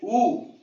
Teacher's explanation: ऊ लगभग मुंह आपका बंद हो रहा है, तो यहां क्या होगा, संवृत। संवृत होता है क्लोज, बंद होना, विवृत होता है ओपन, खुलना।